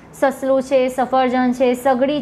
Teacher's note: કેમ કે જ્યારે ઉચ્ચારણ વખતે જીભ હવાને પૂરેપૂરી રોકવાને બદલે હવા ઘસાઈને પસાર કરે છે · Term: દંત્ય સંઘર્ષી વ્યંજન